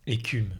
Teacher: le U français est une voyelle qui n'existe pas spécialement dans les langues anglaises et que chez vous, ça se transforme en OU